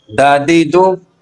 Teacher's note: دال کا مخرج زبان کی نوک کا اوپر کے سامنے والے دو دانتوں کی جڑ سے لگنا۔ زبان کی نوک جب ثنایا علیا اوپر والے دو دانت ہیں اس کی جڑ سے لگے تو اس وقت یہ حرف ادا ہوگا۔